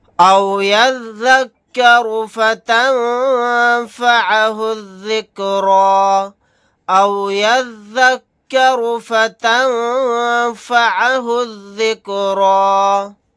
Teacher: نون ساکن کے بعد فا آ گیا، یہاں پر اخفا کا قاعدہ ہوگا۔